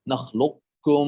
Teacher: يجوز في هذا اللفظ إدغام القاف في الكاف إدغاما كاملا وهو المقروء عند حفص، أو إدغاما ناقصا، أو إدغاما ناقصا.